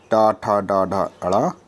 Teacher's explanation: टा वर्ग में आते हैं टा ठा डा ढा अड़ा, इसका उच्चारण स्थल है मूर्धा